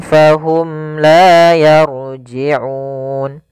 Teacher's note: mim mati bertemu dengan lam kita namakan dengan izhar syafawi suara mimnya harus jelas